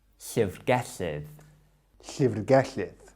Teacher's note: at the end we've got two Ds, and this represents a th sound, like in the English word other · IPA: [ɬəvrˈɡɛɬɪð]